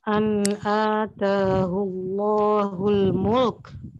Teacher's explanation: lam sukun jangan sampai terbaca lo. Di samping itu harus diperhatikan sifat hamas huruf kaf sukun, yakni huruf ketiga dari belakang yang berharokat hendaknya agak sedikit dihentakkan suaranya.